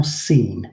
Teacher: you can hear there's slightly more length to the articulation in seen